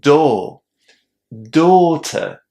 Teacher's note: We have a very long o in that first syllable. And the trap here is that many students want to pronounce the letters au in that first syllable as or o.